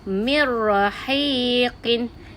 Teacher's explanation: Seolah-olah nun sakinah telah digabungkan dengan ra. Dan bacaannya tak ada dengung.